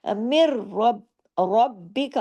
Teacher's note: را کے اوپر زبر ہے، را یہاں ہیوی کر کے پڑھا جائے گا کیونکہ را کنڈیشنل ہیوی ہے، الف، لام اور را، یہ تین